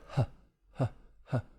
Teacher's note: Friction sound, air kind of being pushed between the vocal cords. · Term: glottal fricative